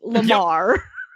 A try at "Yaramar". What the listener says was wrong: It's a Y sound, so shouldn't it be Yaramar?